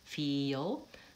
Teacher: we add the schwa before the L at the ends of words like feel